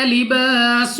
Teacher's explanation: سین کو سیٹی والی آواز کے ساتھ پڑھنا ہے